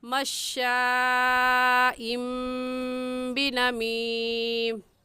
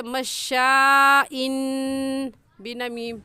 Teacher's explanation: ہم نے با کو میم کے ساتھ بدل دیا، چھوٹی سی میم لگا دی، اور اس تنوین کو اس میم کے ساتھ ملا کر پڑھیں گے اور ہو جائے گا مشائم بنمیم۔ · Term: اقلاب